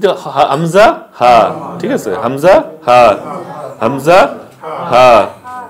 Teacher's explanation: 1 নম্বর মাখরাজ হলকের শুরু হইতে, হলকের শুরু হইতে হামজা